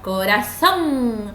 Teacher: La fuerza de voz se va a encontrar en la última sílaba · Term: palabras agudas